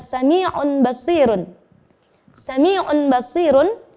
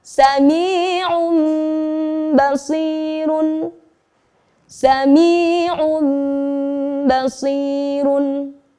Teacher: pada bacaan iqlab ini disertakan dengung, yakni menahan bacaan tersebut selama 2 ketuk. Itu adalah contoh nun sukun bertemu ba.